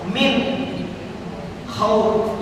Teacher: seperti agama ini amanah sama faamanahum mim ketemu mim id mimi lagi di tangan dua harakat ya min khauf nun mati bertemu dengan k izhar izhar khalqi nunnya mesti jelas · nun mati bertemu dengan khaw, izhar khalqi, nunnya mesti jelas